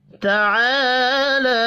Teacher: تعالی اس میں الف مدہ اور کھڑی زبر 1 الف کے برابر کھینچ کر پڑھے جائیں گے